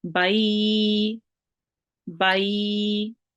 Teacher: Ba maftu, ba carrying a fatha, and ba maftu joining onto the ya sakin, meaning ya carrying the sukoon sign, will be ya leen, and that means that ba is joined onto the ya and we make it long for 2 seconds. or 2 counts.